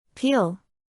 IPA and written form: piːl (peel)